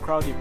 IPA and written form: ˈkraʊdɪd (crowded)